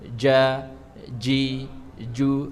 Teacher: Raja huruf jim itu kan ada di tengah lidah